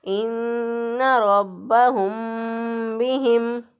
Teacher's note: हा का जो मखरज है वो है अक्सा हलक, यानी गले का वो हिस्सा जो कि सीने की तरफ होता है, वहाँ से हा अदा होता है।